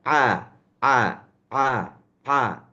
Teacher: Bedanya apa A itu di dada Ain itu dienggorokkan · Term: huruf Ain